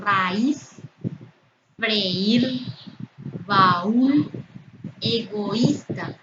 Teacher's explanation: las vocales abiertas A y la cerrada que lleva tilde se encuentran en sílabas separadas, forman sílabas separadas, no están en una misma sílaba. Aquí también, freír, están en sílabas separadas y la vocal cerrada está tildada, lleva tilde.